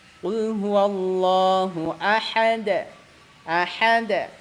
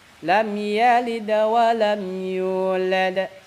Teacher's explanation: Lam yalid ringan. Lam yalid kecil pantulannya. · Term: qalqalah sugro